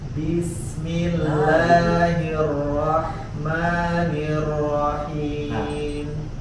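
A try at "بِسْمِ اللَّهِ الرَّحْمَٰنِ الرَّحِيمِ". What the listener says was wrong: Tebal di huruf ro-nya masih kurang. Bismillahirrahmanirrahim. Ketika tebal, pangkal lidahnya diangkat.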